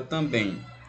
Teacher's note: Vocálico, ou seja, ele serve apenas para nasalizar a vogal anterior. É como se eu falasse o A com tio aqui nele, tá? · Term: ditongo decrescente nasal